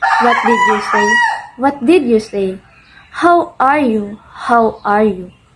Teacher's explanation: raising your voice at the end of a question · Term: intonation pattern